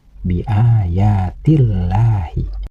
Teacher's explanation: Kalimat Allah ini harus dibaca tarkik, yaitu dibaca tipis, karena kalimat Allah ini didahului oleh huruf yang berbaris kasroh.